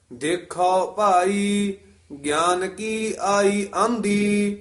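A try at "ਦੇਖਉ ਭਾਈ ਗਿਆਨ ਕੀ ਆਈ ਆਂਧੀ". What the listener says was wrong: ਇਸੇ ਤਰ੍ਹਾਂ ਦੇਖੋ ਨਹੀਂ ਕਹਿਣਾ, ਜਿਸ ਤਰ੍ਹਾਂ ਉਚਾਰਨ ਕੀਤਾ ਗਿਆ ਹੈ ਦੇਖਾਓ ਖੱਖੇ ਕਨੌੜਾ ਹੈ। ਦੇਖੋ ਭਾਈ, ਇਹਨੂੰ ਗਾਨ ਨਹੀਂ ਕਹਿ ਦੇਣਾ। ਗੱਗੇ ਸਿਆਰੀ ਐੜੇ ਕੰਨਾ ਨੰਨਾ ਗਿਆਨ ਉਚਾਰਨ ਕਰਨਾ, ਹੇਠਾ ਯਈਆ ਹੈ ਦਾ।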